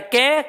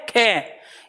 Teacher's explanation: खे का उच्चारण करेंगे तो हवा ज्यादा है, कै खे। इसके बाद गे घे, घे में उच्चारण में ज्यादा आता है। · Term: महाप्राण